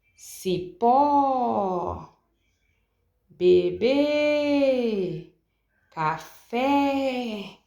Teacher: nessas três palavras você pode perceber que eu fiz um prolongamento da última sílaba nesse caso a última sílaba é que é a mais forte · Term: oxítona